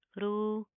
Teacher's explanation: مداریہ لمبا کریں گے، کھینچ کر پڑھیں گے، ٹھیک ہے. را کو پراپر منہ کو پر کر کے پڑھیں گے، موٹا پڑھا جائے گا